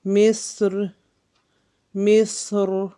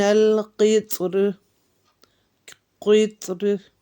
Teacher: دونوں طریقوں پہ ہم پڑھیں گے، باریک بھی اور موٹا بھی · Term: تفخیم اور ترقیق